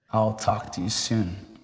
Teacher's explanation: do you hear how the music or intonation Falls after the final stressed word I'll talk to you soon the falling intonation occurs on a · The falling intonation occurs on a one-syllable word, which means that there will be this high to low intonation pattern on the word soon.